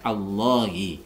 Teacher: Di sini kita berikan lafaz atau harokat bantuan fathah di depan karena di sini adalah huruf tebal. Jadi lafaz Allah itu apabila di awal kita membaca maka harus dibaca tebal